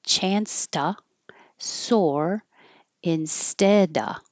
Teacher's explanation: So you don't have to say the VV instead of you can drop the V because the next word begins with a consonant